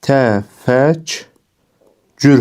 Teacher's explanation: Burada da k samiti g samiti ilə əvəz edildi.